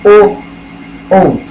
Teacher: और जो कंठ और ओष्ठ यानी कि जो होठों को और जीभ को मिला के बोला जाए वो ओ ओ। क्योंकि जब हम बोलते हैं तो हमारा जो माउथ है या जो मुंह है वो गोले की शेप में कन्वर्ट हो जाता है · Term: कंठोष्ठीय